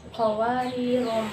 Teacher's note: Dan pada ayat berikutnya lafaz qawarir itu ada tanda bulatan tapi itu bulat, enggak lonjong, namanya sifro mustabir. Cara membacanya itu kita pendek walaupun ada huruf alifnya, jadi langsung qawarir gitu.